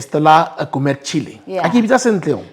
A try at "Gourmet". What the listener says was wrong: It's Gourmet. The T is silent.